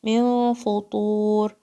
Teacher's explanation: Fa is light, ta is heavy. And you're going to stretch it 4 counts.